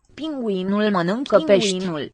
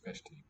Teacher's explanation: listen to how the E at the end of the plural marker here in that final noun, how it softens and weakens